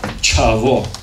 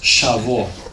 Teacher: the aspirated ch, yeah, chavo, the boy, becomes shavo in Vlach